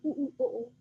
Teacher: हमारी मुखाकृति किस प्रकार बनती है गोला आकृति है इसलिए इसे वृत मुखी कहते हैं